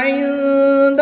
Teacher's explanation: نون ساکن کے بعد دال حروف اخفا میں سے ہے تو یہاں پر اخفا ہوگا، یہاں پر غنہ زمانی کر کے پڑھیں گے